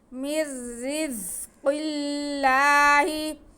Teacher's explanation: را باریک پڑھا جائے گا کیونکہ را کے نیچے زیر ہے